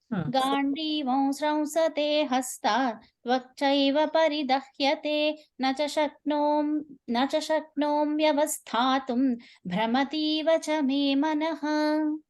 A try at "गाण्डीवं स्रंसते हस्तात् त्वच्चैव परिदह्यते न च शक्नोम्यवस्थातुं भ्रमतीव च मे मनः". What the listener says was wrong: Good. Today's chanting was excellent, I must say. Just 2-3 pronunciations here and there, but I see y'all are improving so well.